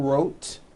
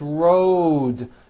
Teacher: It's not wrote, unvoiced, it's road. The whole word is voiced. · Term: voiced D ending